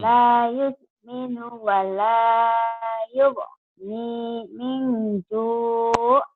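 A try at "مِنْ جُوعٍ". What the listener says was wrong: Ya, itu bagus tuh. Cuman kurang neken aja. Menjur, jur, ya, dilatih lah gitu. La yusminu wa la yughni min ju'.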